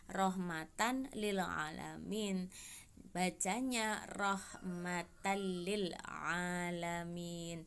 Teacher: bunyi nun sukun atau tanwin ke huruf lam ro tetapi tidak disertai dengan dengung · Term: idgam bilagunnah